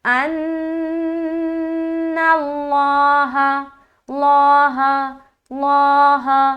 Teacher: حرف کے اوپر زبر یا پیش ہے تو لفظ اللہ کا لام کو موٹا پڑھیں گے، اور اگر اس حرف کے نیچے زیر ہے تو لفظ اللہ کا لام کو باریک پڑھیں گے۔